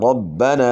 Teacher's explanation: الف سے پہلے زبر ہے، الف مد ہے، تو ایک الف کی مقدار کے برابر مد ہوگی